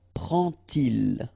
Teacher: you won't pronounce it like D to make the liaison, but you will pronounce it like T. And so you will get prend-il, prend-il, okay?